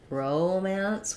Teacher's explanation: we can stress it either way romance this is one where if we're talking about the noun it's going to sound like romance with first syllable stress